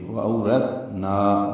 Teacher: او واو لین ہے، را پر پڑھیں گے، تا ساکن پہ ہمس ہوگا، یہ نرمی سے پڑھا جائے گا. زبان کی نوک سامنے کے دانتوں کے اندرونی کناروں سے لگائیں گے. وَأَوْرَثْنَا نا الف مدہ ہے، 2 حرکات لمبا کریں گے. · وَأَوْرَثْنَا میں واو دونوں واو ہونٹوں کی ناتمام گلائی سے ادا کرتے ہیں. او واو لین ہے، را پر پڑھیں گے، تا ساکن پہ ہمس ہوگا، یہ نرمی سے پڑھا جائے گا.